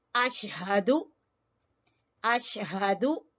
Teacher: हा सबसे नीचे वाले हिस्से से, ठीक है, जो गले का सबसे आखिर वाला हिस्सा है